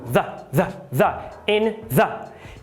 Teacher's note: precisamos aqui fazer a interdental vozeada, que é aquele zumbido, mais um chozinho